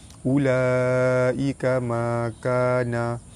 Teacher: Huruf mad bertemu dengan hamzah di dalam satu kalimah, hukum dia mad wajib mutasil, dibaca panjang 5 harakat